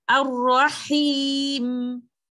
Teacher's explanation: I have to give the permanent characteristic of meem as well, which is gunna